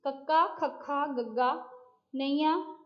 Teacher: ਇਹਦੇ ਨਾਮ ਤੋਂ ਹੀ ਪਤਾ ਲੱਗ ਰਿਹਾ, ਕੰਠ ਦਾ ਮਤਲਬ ਹੁੰਦਾ ਹੈ ਗਲਾ, ਠੀਕ ਹੈ, ਕੰਠ ਦਾ ਮਤਲਬ ਹੁੰਦਾ ਹੈ ਗਲਾ, ਤੁਹਾਡਾ ਸੰਗ। ਇਹਨਾਂ ਦਾ ਉਚਾਰਨ ਸੰਗ ਵਿੱਚ ਹੁੰਦਾ ਹੈ, ਮਤਲਬ ਗਲੇ ਦੇ ਵਿੱਚ ਹੁੰਦਾ ਹੈ। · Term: ਕੰਠੀ ਵਿਅੰਜਨ